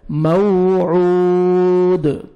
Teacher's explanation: دال ساکن ہو جائے گا، ڈبل ساؤنڈ آئے گا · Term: قلقلہ